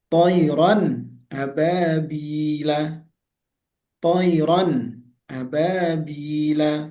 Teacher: ron itu tanwin bertemu dengan hamzah a. Jadi bunyi n-nya itu sangat jelas sekali. Bunyi nunnya atau bunyi tanwinnya itu jelas. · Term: bunyi izhar